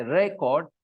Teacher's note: When I stress re, the first part, I say record, then it is a noun. And when I say record, then it is a verb.